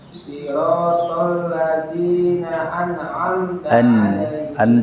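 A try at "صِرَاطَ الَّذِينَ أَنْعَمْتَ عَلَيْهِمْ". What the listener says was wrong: Jangan membal. An'am, tidak. An'amta.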